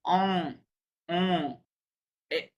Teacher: আপনি অ বলবেন নাক দিয়ে একটা সাউন্ড বের হবে অ এই এন যুক্ত যতগুলো আছে এগুলোকে বলা হয় নাজাল সাউন্ড